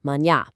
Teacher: it's got this distinct, beautifully nasal sound right at the tail end